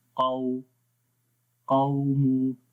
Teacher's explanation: جب واو کے اوپر آئے گی تو ہونٹ گول ہو جائیں گے